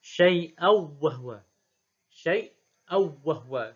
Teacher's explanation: Syai' di saktah, aw wahwa dibaca dengan tarkil gunnah, iaitu idgham sahaja. Idgham bila gunnah.